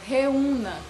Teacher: na palavra reúna, eu tenho aí o E e o U formando um hiato. Os dois são sons fortes, certo? Então, o U é a segunda letra do hiato.